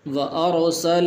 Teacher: را سے پہلے زبر ہے تو اس لیے یہاں پر بھی اس کو پر کر کے پڑھیں گے، موٹا کر کے پڑھیں گے